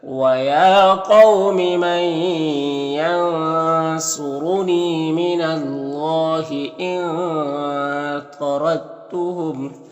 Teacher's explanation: دال تا کے ساتھ مدغم ہو جائے گا، تا کے ساتھ مدغم ہو جائے گا، یعنی دال کو نہیں پڑھیں گے، تا کو پڑھیں گے۔ تو اس کو ادغام متجانسین کہتے ہیں، اس کو بغیر غنہ کے پڑھتے ہیں، اس طرح سے۔